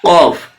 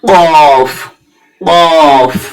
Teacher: জীবের গোড়া যেটা আছে সেটা থেকে ওপরে সোজাসুজি দিলে উচ্চারণ হচ্ছে কফ এবার একটু আগে বাড়িয়ে দিই কাফ